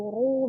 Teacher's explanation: Saat dhammah itu ru berarti dibaca tebal, atau sukun sebelumnya fathah misalnya ar.